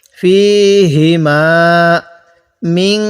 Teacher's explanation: এই নুন সাকিনের মধ্যে গুণনা করব।